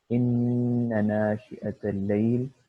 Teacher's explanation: مثلا یہاں پہ اس آیت میں ان ناشئۃ اللیل، یہاں پہ ہم لوگ جب ان نہ پڑھتے ہیں تو آپ سن سکتے ہیں کہ ہم نون کو تھوڑا سا کھینچ رہے ہیں، اور جو نون کی آواز ہے وہ سانس اور ناک سے نکل رہی ہے. تو اگر آپ اپنی انگلی ناک کے پاس رکھیں اور آپ ان نہ پڑھیں تو آپ کو محسوس بھی ہوگا کہ ناک سے سانس نکل رہی ہے. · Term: غنہ